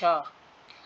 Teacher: महाप्राण और अघोष ध्वनि है। · तालव्य का अर्थ क्या होता है? जीभ जो है तालु से लगती है।